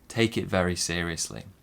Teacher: We stress seriously.